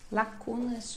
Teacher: quase não se percebe o S final